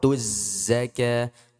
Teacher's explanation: Jadi waw di sini ini tidak terbaca ya. Kenapa? bertemunya dua sukun. Waw sukun dengan lam sukun. Sehingga waw itu dihapus.